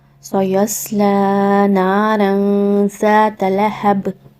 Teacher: را کے اوپر تنوین ہے تو تنوین کے بعد زال آ گیا ہے تو یہاں پر آپ نے اخفا کرنا ہے · سین کے بعد سات کو، سات تفخیم کا لیٹر ہے تو سات کو آپ نے ہمیشہ موٹی آواز کے ساتھ ادا کرنا ہوتا ہے۔ لام کے اوپر الف صغیرہ ہے یعنی کھڑا زبر، تو لام کو آپ نے 2 حرکہ کھینچ کے ادا کرنا ہے۔